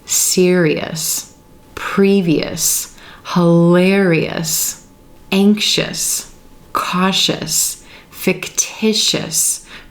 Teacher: One thing I want you to notice, no matter how we're pronouncing this suffix, whether it be us or EOUS, the stress in these words comes in the vowel sound right before the suffix, or the syllable right before the suffix each time.